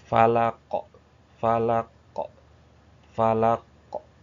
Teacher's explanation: diqalqalahkan. Kalau berhenti huruf terakhirnya disukunkan jadi qalqalah.